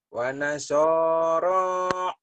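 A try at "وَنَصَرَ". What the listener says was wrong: Wanasara. Jangan nasara. Jangan ditekan. Jangan ditekan ya. Dilepas aja. Wanasara.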